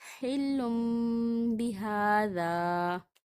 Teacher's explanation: حل بہذا، تنوین ہے، تنوین کے بعد حرف با آ رہا ہے یعنی کہ اقلاب ہو رہا ہے، یہ اقلاب کا قاعدہ ہے۔ یہاں پہ تنوین کے بعد با آ رہا ہے تو ہم یہاں پہ تنوین کی آواز کو میم میں تبدیل کر رہے ہیں، حل بہذا۔ ہم نے نون کو میم میں تبدیل کیا، اسی کا نام اقلاب ہے۔